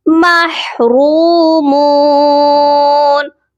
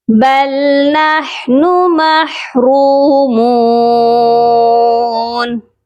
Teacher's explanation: إِنَّا لَمُغْرَمُونَ بَلْ نَحْنُ مَحْرُومُونَ، با لام زبر بل، با کو لام کے ساتھ ملائیں گے، نحنو، ہا کی آواز حلق سے آئے گی. محرومون، را کو موٹا بھی کریں گے اور ایک الف کی مقدار لمبا کریں گے، اور میم کو بھی ایک الف کی مقدار لمبا کر کے پڑھا جائے گا کیونکہ دونوں کے ساتھ حروف مدہ ہے.